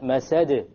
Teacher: there's a slight more emphasis on the masad because it's at the end of a word. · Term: qalqala